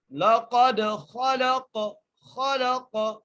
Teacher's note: لَقَدْ، خا کے اوپر زبر ہے، لام کو قاف سے ملانا ہے اور قاف پر قلقلہ کریں گے